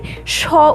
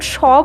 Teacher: যেমন তুমি যদি স উচ্চারণ করো তো তুমি সেখানে বুঝতে পারবে উচ্চারণটা করলে আমরা যখন স বলছি ভেতর থেকে কিন্তু একটা উষ্ণ একটা হালকা বায়ু বেরিয়ে আসছে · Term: উষ্ণধ্বনি